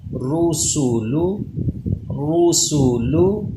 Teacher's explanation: را پہ پیش ہو پھر بھی یہ پر پڑھا جاتا ہے ، اس لیے اسے ہم پر یعنی موٹا پڑھ رہے ہیں۔